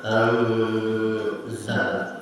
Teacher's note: nun mati bertemu salah satu huruf ikhfa, maka bacaan nun tidak jelas tetapi dibaca samar, anzala, ada dengung.